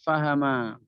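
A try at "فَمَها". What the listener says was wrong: Pamaha, bukan paham. Pamaha.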